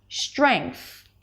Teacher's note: you may hear people pronouncing the STR consonant cluster with a shh sound.